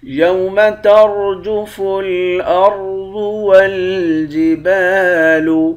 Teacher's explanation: یوم ترجف الارض والجبال، را اور یہ والا را، ان دونوں را کو موٹا پڑھیں گے، ضاد کو موٹا پڑھیں گے